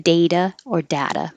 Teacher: the T will always change to a D in data or data, but the vowel can be different